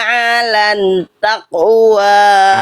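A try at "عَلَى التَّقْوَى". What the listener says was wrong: Alat takwa, jangan alan takwa. Jangan ada nun, nggak ada nun. Jangan alan takwa. Alat takwa. Alat takwa.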